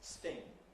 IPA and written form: stɪŋ (sting)